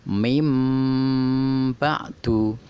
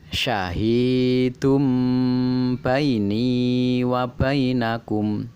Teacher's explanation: Adapun cara membacanya adalah dengan merapatkan kedua bibir disertai dengung sehingga suara nun mati atau tanwin berubah menjadi mem mati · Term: Iklab